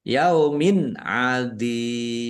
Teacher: kasroh tanwin bertemu dengan huruf ain, bacaan idhar, dibaca jelas. Dua kasroh ya sukun mat tobi'i, tetapi karena bertemu dengan huruf terakhir yang dibaca sukun karena wakof, maka menjadi mat arid lis sukun.